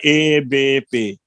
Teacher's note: تو یہ الف اور یا مدہ کی درمیانی آواز ہے. مثلا ای اور آ کی درمیانی آواز آئے گی اے. جیسے ایک سجدہ ہوتا ہے، ایک قیام ہوتا ہے، اور قیام اور سجدے کے درمیان رکوع ہے، تو یہ الف رکوع کے اندر ہے.